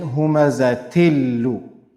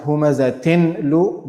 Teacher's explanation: Not humazatinlu, but humazatillu. The tanween got merged into the lam, and lam carried a shadda, automatic shadda on it, because of the merging. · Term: idgham without gunna